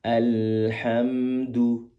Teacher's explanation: Pastikan ketika du itu muncung, benar-benar muncung bibirnya karena dhammah itu harus dimuncungkan kedua bibir. Sambil menempatkan alhamdu, posisi ujung lidah ke tempat tumbuhnya gigi seri atas.